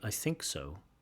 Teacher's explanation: I prefer to put the stress on think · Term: sentence stress